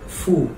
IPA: fwu